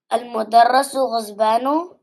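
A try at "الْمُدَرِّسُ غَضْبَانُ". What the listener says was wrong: Al-mudarrisu. See, there is a kasra. There is a mudarrisu. The ghadban. There is no zwad in Arabic. Okay, it is ghadban.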